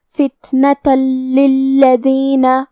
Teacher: ہم یہ تنوین کو لام میں ملا کے بغیر غنہ سے لیکن تشدید کے ساتھ یہ حکم کو ادا کریں گے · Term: ادغام بغیر غنہ